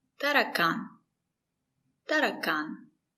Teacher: The stress is on the third syllable.